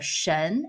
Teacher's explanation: the 神, it's second tone, 神. Can you feel the tone goes up?